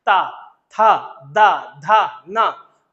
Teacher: जीभ जाकर के सीधे सीधे दांत के पे आघात करती है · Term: दंत वर्ग